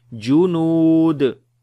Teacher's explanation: Noon we long due to waw madda, and on the dal we make qalqala.